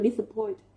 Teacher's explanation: Vậy thì cô suy ra với cái động từ là disappoint, trọng âm sẽ rơi vào point âm tiết thứ 3 của từ nhá